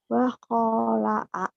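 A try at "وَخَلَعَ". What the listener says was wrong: nggak ada yang panjang.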